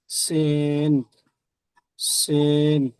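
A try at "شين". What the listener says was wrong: প্রথমটা সিন তারপরে শিন। জি প্রথমটা সিন তারপরে শিন, ওখানে পড়বেন। সিন এটাও তিন আলিফ টান, তারপরে শিন এটাও তিন আলিফ টান।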